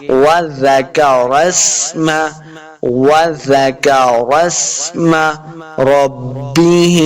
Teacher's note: را کے اوپر زبر ہے، اس کو پر پڑھنا ہے ، آگے سین کے سامنے لائیں گے، سیٹی کی آواز آئے